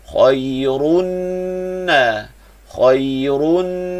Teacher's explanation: Na dua harakat mat tabi'i.